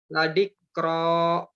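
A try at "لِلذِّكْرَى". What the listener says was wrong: Boleh diperjelas zanya. Za, zi, la zikro.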